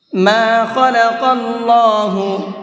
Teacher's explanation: اللہ کلام کو یہاں بھی منہ بھر کے پڑھیں گے